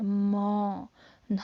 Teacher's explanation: नाक और होंठ, म, हमारे होंठ जो है वो आपस में स्पर्श कर रहे हैं, और जो आवाज़ जो है वो नाक से भी आ रही है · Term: नासिका ओष्ठ